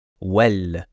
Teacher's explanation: on va le prononcer comme s'il y avait un E avec un accent grave sur la lettre A